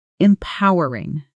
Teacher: Stress on the second syllable and po sounds exactly like the word po like a comic book sound effect.